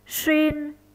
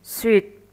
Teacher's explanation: Vần uyên và vần uýt giống nhau đều có âm đệm u, âm chính y. Khác nhau, vần uyên có âm cuối n, vần uýt có âm cuối t. Vì khác nhau âm cuối nên việc kết hợp với các thanh cũng khác nhau.